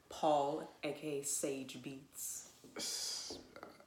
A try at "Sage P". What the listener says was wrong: You missed a letter. It's P. Sage P Beats. Sage P. Just you don't have to say the Beats part.